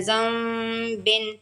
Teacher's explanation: نون ساکن اور تنوین کے بعد ورڈ با آ جائے تو نون ساکن اور تنوین کی آواز کو میم میں بدل کے اور یہاں پہ اخفا کر دینا ہے۔ زال زبر کو ہم نون سے ملائیں گے، زال زبر نون زم، زن نہیں کہنا، زم کہنا ہے، زم بن، زال زبر نون زم با دو زیر بن، زم بن۔